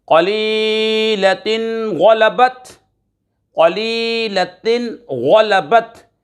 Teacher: قلیلۃ غلبت، قلیلۃ غلبت، یہاں پر اظہار ہو رہا ہے 2 زیر کی تنوین کے بعد غین حروف حلقی میں سے آ رہا ہے، اظہار ہوگا، غنہ نہیں کریں گے۔